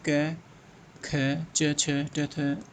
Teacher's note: प्रत्येक वर्ग का पहला दूसरा वर्ण अघोष होता है, जैसे क ख च छ ट थ होता है।